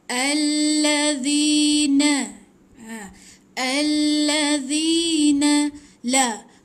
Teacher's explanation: Huruf zal hujung lidah di antara dua gigi, panjang dua harakat.